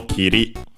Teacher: it's regular so it's accented on the last syllable